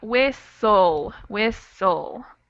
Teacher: We kind of have that schwa sound right before the L instead of the T · We have a silent T here, and even though there's not really a vowel, we do sort of pronounce the schwa.